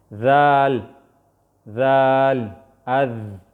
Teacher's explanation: د دې ذال کله چې د ژبې سر د دواړو غاښونو یعنی کته غاښونو برنو غاښونو ترمنځ راشي نو دلته نه ذال ادا کېږي